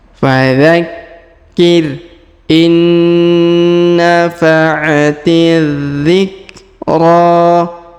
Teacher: Kemudian huruf ra kita panjangkan 2 harokat karena di atasnya terdapat alif kecil dan di depannya terdapat alif bengkok atau alif maksurah.